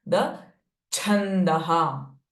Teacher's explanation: cha being the Mahaprana sound, whenever you pronounce it, you need to feel force in your chest area, in the Anahata Chakra.